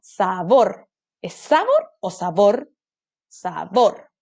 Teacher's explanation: sílaba tónica última entonces es una palabra aguda